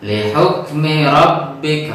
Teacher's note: ro-nya juga ro tafkhim, ro tebal karena ro-nya ro fathah